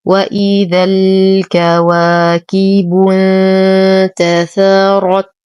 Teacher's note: ننتبه لتفخيم الراء وتخليصها من ترقيق الثاء والتاء